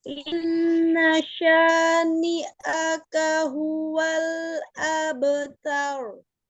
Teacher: dipertahankan gunnahnya, ditahan 2 sampai 3 harokat tuh suaranya masuk ke rongga hidung